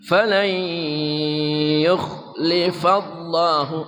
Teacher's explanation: nun mati bertemu ya idgham bi gunnah